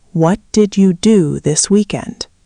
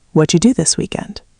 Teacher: That's a huge reduction. What did you becomes almost what'ja